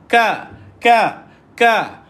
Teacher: Lidah tak terangkat. Dan kaf ini huruf yang nipis.